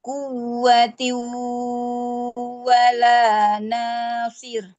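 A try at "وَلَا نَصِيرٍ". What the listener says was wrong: Nah, seperti itu. Masya Allah, barakallahu fikum. Sip, sudah mantap Bu ya.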